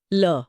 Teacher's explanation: और पार्श्विक व्यंजन ल ल बोलते समय हवा जीभ के बगल से यानी पार्श्व से निकलती है। इसलिए ये पार्श्विक है।